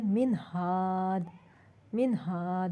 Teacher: ہا کی مثال ہے من ہاد، من ہاد، نون ساکن کے بعد ہا آیا، اقصی حلق سے جو ادا ہوتا ہے ہا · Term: اظہار